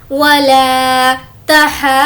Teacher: वला तहाज़ूना, हा को खींचेंगे क्योंकि उस पर मद है और खड़ा ज़बर है, खींचते हुए उसमें हम ज़ौद को मिला लेंगे क्योंकि ज़ौद पर तशदीद है। वला तहाज़ूना, और ज़ू को खींचेंगे क्योंकि वाव मद्दा है।